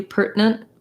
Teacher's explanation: So pertinent, I would say maybe a little vowel there, pertinent. If you wanted to do pertinent, this would be faster and shorter, and it does sound closer to 2 syllables.